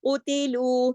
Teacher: اب اس کو موٹا پڑھیں گے قوتلو, لیکن تا اور لو موٹا نہیں ہوگا. قوتلو, سب جو قاف ہے ایک حرکت پڑھا جائے گا, تا ایک حرکت, لیکن لو دو حرکات پڑھا جائے گا, کیونکہ لو کے ساتھ واو مدہ ہے. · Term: ہیوی لیٹر